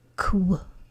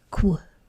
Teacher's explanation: it starts with the motor off, and then the motor starts on again when we say the w part of it